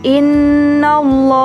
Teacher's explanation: Kotak berwarna biru menunjukkan ilmu tajwid yang disebut lam jalalah tafkhim, yakni lafaz lam pada kata Allah bertemu dengan huruf sebelumnya yang berharokat fathah atau dhammah. Cara membacanya yakni harus tebal dan bunyinya menjadi loh.